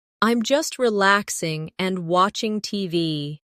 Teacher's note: No long pause between relaxing and and.